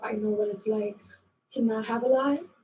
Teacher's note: So New York Latino English speakers have a particularly light L.